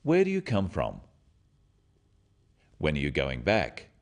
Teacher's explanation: questions starting with where when what why or who are asking for information and they often have a falling tone